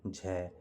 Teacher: तो आपका झ व्यंजन ऐसा है जो तालव्य भी है, महाप्राण भी है और घोष भी है।